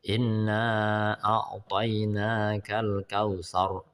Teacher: Dalam surat Al Kautsar inna a'toinakal kautsar, ah itu ra nya adalah tafkhim, tebal.